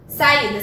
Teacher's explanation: O meu I é a minha sílaba tônica.